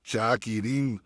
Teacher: शाकिरीन नाक में चली गई आवाज। क्यों? क्योंकि हमें पता है कि नून आने वाला है, तो वो नून के प्रैक्टिस में ही हमारा आवाज जो है हमारी वो नाक में चली जाती है। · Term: गुन्ना